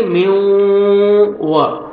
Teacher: نون ساکن کے بعد حروف یرملون میں سے واو آ رہا ہے تو غنہ کے ساتھ ادغام کریں گے ، میو و، میو نوز میں ساؤنڈ لے کے جائیں گے،